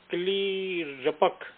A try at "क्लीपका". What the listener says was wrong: क्लीपका, क्लीपका क पूरा बोलिए, क्लिपक नहीं है, क्लीपका।